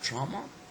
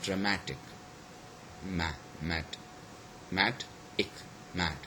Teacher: So we have got trauma, okay, the first syllable is stress, but when this suffix was added to it, so the stress is changed from the first syllable to the second syllable. Okay, so we have got dramatic, mat, so it is the mat which receives the stress.